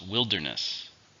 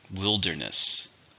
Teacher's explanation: 3 syllables, stresses on the first.